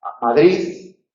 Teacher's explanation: Realización fricativa débil de la D en posición implosiva